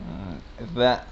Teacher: Nah, jadi za bukan za, bukan ja ya, tapi za, lidah kalian itu digigit.